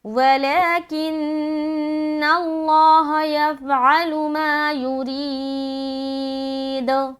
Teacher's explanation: کو باریک رکھنا کیونکہ اس کے نیچے کیا ہے زیر ہے، دال کے اوپر جب اسٹاپ کریں گے تو یہاں پر ہمیں قلقلہ کرتے ہوئے اسٹاپ کرنا ہے